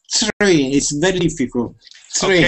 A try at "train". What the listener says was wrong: With this word, we're not going to pronounce a T like this. Okay? We're not going to say tur. We say tur. It's almost like a CH. It's almost like a CH, and we say tur.